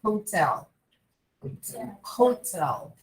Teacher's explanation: A gente vai falar o H com o som de R. Mas o R realmente aspirado. Aquele R que a gente fala com a garganta. · a sílaba tônica é a última, não é a primeira. Então, é exatamente onde nós colocamos a sílaba tônica quando nós falamos a palavra hotel em português.